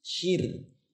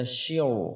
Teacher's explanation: huruf ra sukun sebelumnya ada baris kasrah maka dia adalah tarqiq tipis